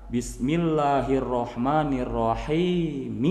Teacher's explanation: Kalau kita mau menyambungkan atau mewasolkan, maka Bismillahirrahmanirrahim. Mi-nya itu harus dibaca berharokat kasroh, baru disambungkan ke bacaan berikutnya.